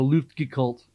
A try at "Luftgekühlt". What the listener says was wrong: You got to put the G in there, I think, though.